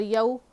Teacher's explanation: واؤ لین ہے، نرم آواز کے ساتھ جلدی ادا کریں گے